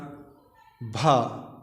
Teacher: जो भा है दोस्तों ये स्पर्श भी घोष है, महाप्राण है, ओष्ठ भी है।